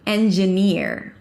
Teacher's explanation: So it's a high E and then you relax it to an R or tense it. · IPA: ˌendʒəˈnɪɹ